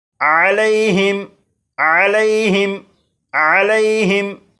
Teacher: इस लफ्ज़ के आखिर में मीम साकिन है और मीम साकिन के बाद तो है, लिहाजा इस मीम साकिन में गुन्ना नहीं करेंगे। और यहाँ पर यालीन है, इसलिए लाम को बग़ैर खींचे पढ़ेंगे